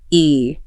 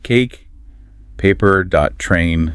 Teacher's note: It just means it's a gliding sound. You start with your tongue in the middle of your mouth and then it glides up toward the front. It's two positions in one smooth motion. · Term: long a